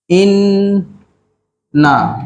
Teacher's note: Jadi dekat sini ada huruf nun yang bertanda syaddah. Jadi bila nun bertanda syaddah, wajib kita baca dengan dengung lah.